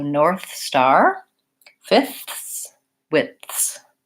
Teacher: all I do to link the two is pull my tongue back into the S position from the TH position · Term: linking